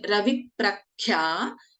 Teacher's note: In Raviprakhya, Kha is a Mahaprana.